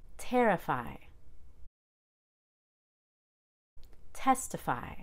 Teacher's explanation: So the Y at the very end of the word is a long I. We don't reduce that long I, but it's quieter and low pitched.